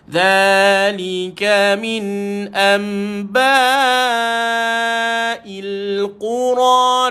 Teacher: Ini nama dia iklab, menukarkan nun kepada mim.